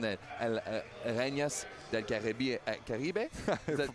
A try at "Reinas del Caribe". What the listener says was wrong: Pronouncing it like it's French. Close enough.